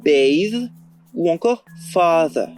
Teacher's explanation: le TH se prononce plutôt /ð/ lorsqu'il est situé au milieu des mots lexicaux